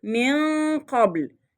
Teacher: ما نطقتش نون خالص، لا جبت إظهار للنون ولا عملت إدغام، ولكن جبت غنة فقط لما جه بعدها حرف من حروف الإخفاء وهو القاف. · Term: الإخفاء الحقيقي